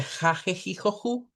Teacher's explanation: esta H, que es la llamada H aspirada, que es el sonido que nosotros usamos para la J en realidad